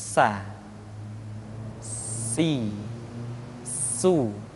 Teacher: Di antara sifat yang menonjol ketika kita mengucapkan huruf sa huruf sin adalah sifat asfir. Di mana ketika kita mengucapkan huruf sa ada suara tambahan yang menyerupai dengan suara belalang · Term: sifat as-safir